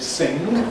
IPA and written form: sɪŋg (sing)